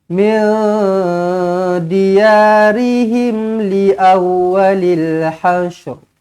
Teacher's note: Nun kosong bertemu dengan dal ikhfa, ikhfa hakiki. Dengungkan dua harakat.